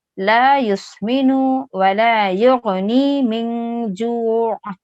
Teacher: آخر میں بس عین کی آواز آپ کو تھوڑی سی ادا کرنی ہے، باقی جو زیر آیا ہے وہ سائلنٹ ہو جائے گا، وہ ڈراپ ہو جائے گا اور عین سائلنٹ ہو جائے گا.